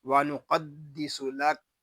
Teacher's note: وَنُقَدِّسُ لَكَ، یہاں قاف کو پر پڑھیں گے کیونکہ قاف حروف مستعلیہ میں سے ہے، دال مشدد ہے، اس کو جماؤ کے ساتھ ادا کریں گے اور وقف میں یہاں ہوگا وقف مطلق۔